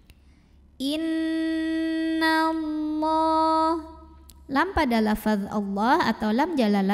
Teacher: hukum ghunnah karena ada Nun yang bertasydid cara membacanya didengungkan jadi bunyi n-nya tahan sampai bergetar halus ke hidung kurang lebih 2 harokat